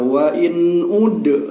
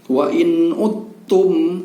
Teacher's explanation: suara dal ini tidak lagi berbunyi qalqalah, tidak lagi ada pantulan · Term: idgham mutajanisain